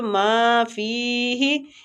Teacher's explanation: ما اور فی دونوں کو قائم مقام کھینچیں گے، ما کے آگے الف مد ہے اور فی کے آگے یا مد ہے